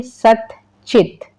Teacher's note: जो दंत वाला है वो किस में बदल गया, तालु में बदल गया।